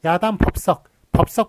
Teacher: 비읍과 시옷이 무성음과 무성음이 만났는데 뒤에 게 썩으로 된 소리가 나네요